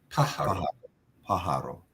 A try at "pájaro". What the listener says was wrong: Good. Sí, pájaro. Okay, muy bien.